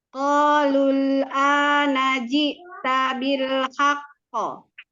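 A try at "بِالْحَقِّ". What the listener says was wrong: Bil haqqo. Jadi jangan terlalu lama. Ya, ketika memberikan sifat qalqalahnya jangan tunggu terlalu lama ya. Bil haqqo. Bil haqqo.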